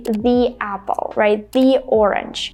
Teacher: when the article the is followed by a vowel sound, we pronounce it as E